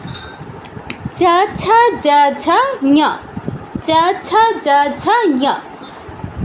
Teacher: এদের উচ্চারণ স্থান হচ্ছে আমাদের তালু, তালুতে